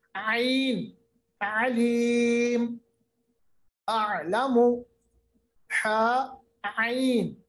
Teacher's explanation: یہ دونوں حروف نکلتے ہیں وسط حلق سے، مڈل آف دا تھروٹ سے